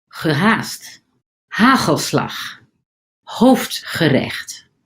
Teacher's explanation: Dutch is well known for its guttural sounds, particularly the hard G and CH sounds, which are produced in the back of the throat. These sounds are more pronounced in Dutch than the other Germanic languages, contributing significantly to its distinctive sound.